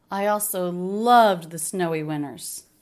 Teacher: so loved he definitely stresses that the most